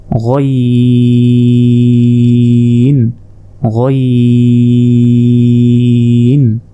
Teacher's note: এরপর দেখুন আইনের মতোই কিন্তু উপরে 1 নোক্তা, এটা হচ্ছে গইন। হলকের শেষ ভাগ হতে গইন উচ্চারণ হয়